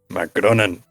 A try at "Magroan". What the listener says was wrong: You put an extra N in there.